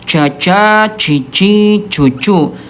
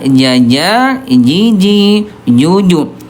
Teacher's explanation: Huruf jim dia jahr. Ayah bunda, tidak ada udara. Ya, jangan sampai bocor.